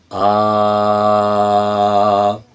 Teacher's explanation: چھوٹی چھوٹی باتیں ہیں لیکن آواز کو مضبوط کرنے کے لیے بڑی قیمتی چیز ہے۔ آ، اس کو ہا نہیں کرنا آپ نے، اس کو صرف گلے سے آپ نے ادا کرنا ہے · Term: الف مد